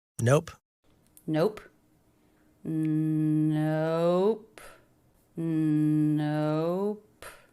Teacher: Little up down shape of stress, released P.